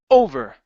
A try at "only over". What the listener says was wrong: push with your push with the sound instead of your instead of the air sound